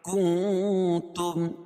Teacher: نون ساکن کے بعد حروف اخفاء کے 15 حرفوں میں سے تا ہے تو یہاں ناک میں آواز کو چھپا کر پڑھیں گے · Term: اخفاء حقیقی